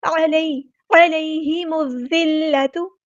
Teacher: الوصل ہمارا ڈراپ ہو جائے گا، لام یہاں پہ لام شمسیہ ہے، ظاہر نہیں کریں گے